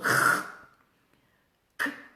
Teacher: le r, ça s'articule en fond de gorge, r, k, aussi au fond de la gorge, alors que t, c'est entre les dents.